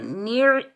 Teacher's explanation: نیچے زیر، نون کو ہم عین ساکن کے ساتھ ملائیں گے، عین کو حلق کے درمیان سے ادا کریں گے